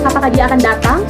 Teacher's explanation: pola intonasinya itu naik di akhir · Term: intonasinya itu ee naik